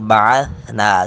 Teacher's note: سیٹی کی آواز نہیں آنی چاہیے